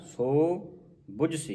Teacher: ਜਿਸੁ ਆਪ ਬੁਝਾਏ ਸੋ ਬੁਝਸੀ ਸੋ ਲੰਮਾ ਕਰ ਕੇ ਹੋੜਾ ਨਾ ਸੋ ਬੁਝਸੀ ਜੇ ਔਂਕੜ ਹੁੰਦਾ ਸੋ ਇੰਨਾ ਕ ਆਵਾਜ਼ ਨਿਕਲਣੀ